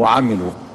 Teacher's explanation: مد طبيعي مقداره حركتين، لا يزاد عن ذلك